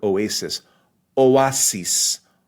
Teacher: So the word has three syllables, right? The first two is that vowel combination being separated. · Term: hiatus